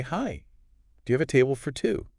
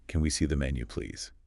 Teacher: that slightly Rising intonation at the end of a question can make it sound a lot more polite